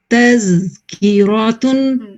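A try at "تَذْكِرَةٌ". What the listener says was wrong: अल्हम्दुलिल्लाह, ठीक है।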